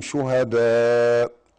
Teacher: مد متصل، مد متصل، يجوز مد أربعة وخمسة